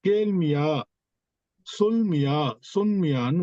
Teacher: அந்த மியா என்ற அந்த அசையில் இருக்கின்ற அந்த மீயும் ஒரு மாத்திரை ஒலிக்காமல் அரை மாத்திரையை பெற்று வரும்